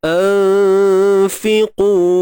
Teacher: fa ni huruf yang nipis. Jadi dengung yang berlaku juga nipis. Anfiqu. Kalau kita buat tebal, anfiqu.